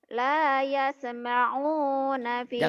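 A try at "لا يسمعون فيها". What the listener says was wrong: Jangan layas, jangan yase, jangan ada e-nya. La yasma'una fiha lagwaw wala kidzaba.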